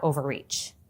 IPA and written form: ˌoʊvərˈriːtʃ (OVERREACH)